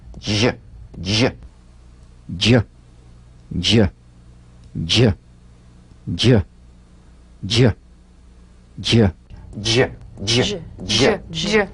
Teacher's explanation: Use a light, quick, energetic staccato treatment and feel a voiced percussive sensation flowing from the hard palate onto the gum ridge.